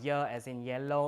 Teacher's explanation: y as in yellow if it's before a front vowel palatalization